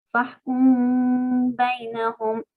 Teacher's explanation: Hice una pausa de 2 tiempos y pronuncié la mim por la nariz. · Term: ikhfa